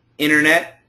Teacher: But most people do say internet with no T